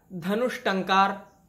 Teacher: विसर्ग और ट मिले तो मूर्धन्य श शुद्ध व्यंजन में परिवर्तित हो गया